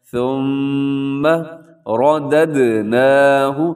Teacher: حرف آگے دیکھیے گا آیت نمبر 5 کا پہلا جو لفظ ہے ثم، یہاں میم مشدد ہے تو میم مشدد پر غنہ ہوتا ہے، آواز کو ناک میں رکھنا ہے. ثم رددناہ، را کے اوپر حرکت ہو تو را موٹی پڑی جاتی ہے، آپ نے اس کو موٹا پڑھنا ہے.